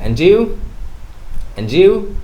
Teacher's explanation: the d sound and y sound, when they blend with each other, they create a j sound.